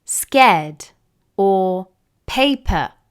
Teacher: In British English, the letter R isn't commonly pronounced when it comes in the middle of a word or at the end of a word.